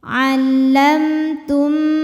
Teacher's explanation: Allamtum, berikutnya ada hukum idgham mimi karena mim sukun menghadapi huruf mim, maka mim pertama dileburkan ke mim kedua disertai bunyi dengung